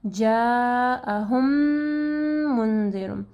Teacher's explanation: میم ساکن ہے اور اس کے بعد میم ہے، تو یہاں پہ غنہ کے ساتھ ہم لوگ اس کو پڑھیں گے